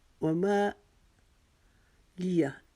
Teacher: وما کو ایک الف کے جتنا لمبا کیا